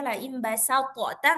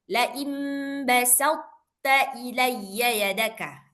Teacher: cara bacanya langsung masuk ke ta, tapi to-nya itu tetap tebal.